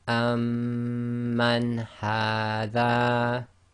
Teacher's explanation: So the noon sakin is followed by one of the throat letters, so it's pronounced clearly, i.e. idh-haar.